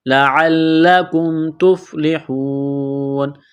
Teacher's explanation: جب یہاں پر وقف کریں گے تو نون کو ساکن کریں گے